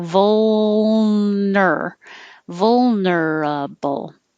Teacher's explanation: vulnerable and vulnerable has a lot of movement between vol so between the l and the n don't move your tongue